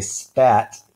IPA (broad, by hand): spæt